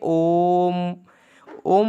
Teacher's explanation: जिस स्वर की उच्चारण करने में 3 मात्रा का समय लगता है उसे प्लुत स्वर कहते हैं। जैसे ओम, ओम के बीच में 3 का अंक बना है तो आपको इससे पता चल जाएगा कि इसे उच्चारण करने में 3 मात्रा का समय लगता है।